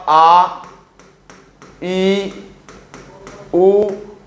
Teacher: दीर्घ स्वर में जो मात्रा, जो उच्चारण है उसमें दुगना समय लगता है।